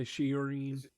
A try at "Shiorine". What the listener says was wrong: It's a little off. The inflection is a little different. You need to lower.